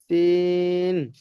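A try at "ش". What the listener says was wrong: শিন, একটা সিন আর একটা হলো শিন।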